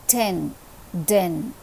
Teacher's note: the tip of the tongue is being raised and it is touching the back portion of the upper front teeth